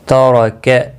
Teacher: را زبر کی وجہ سے پر پڑھا جائے گا